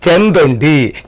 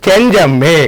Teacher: അനുസ്വാരത്തിന് ശേഷം വർഗാക്ഷരം വന്നാൽ അനുസ്വാരം പോകും. ഏത് വർഗാക്ഷരമാണോ വന്നത് ആ വർഗാക്ഷരത്തിന്റെ അനുനാസികം ആദേശിക്കും. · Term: ആദേശസന്ധി